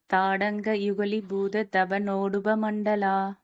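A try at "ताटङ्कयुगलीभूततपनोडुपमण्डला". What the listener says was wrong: யுகலீபூதன்னு சொல்லக்கூடாது, நெடில்லது. தாடங்க யுகலீபூதன். இன்னொரு தடவை சொல்லுங்க அது.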